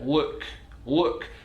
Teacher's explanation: it's coming from the back of the mouth with the tongue down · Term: dark l